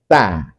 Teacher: taruh ujung lidah di belakang gigi seri atas